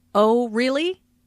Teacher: Notice the rising intonation on really. This shows that the speaker is surprised.